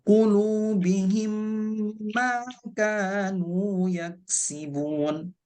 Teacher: Idgham mimmi kemudian gunnah. Jadi makanya panjangnya sebaiknya 3 harokat.